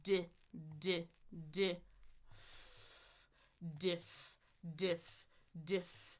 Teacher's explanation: So my tongue is up for the D. It goes down for the I